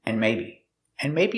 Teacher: we hear the word and not pronounced and but pronounced n